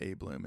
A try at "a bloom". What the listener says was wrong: I don't like the way you say A-Bloom. It's a bloom. Stop overpronouncing the A. Bloom. you mean a bloom?